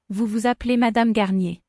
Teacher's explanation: the first s is silent but the second will be heard because it's followed by a vowel